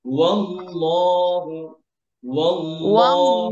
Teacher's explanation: ভাই, যখন হচ্ছে আপনি الذي ওয়াল্লাহু ধরবেন, ওয়াল্লাহ এভাবে যেন হয়, ওয়াল্লাহ, ওয়াও যেন পাঠ না হয়, ওয়াও যেন এই যে আল্লাহ শব্দের সাথে মোটা না হয়, লাফজুল জালার সাথে মোটা না হয়।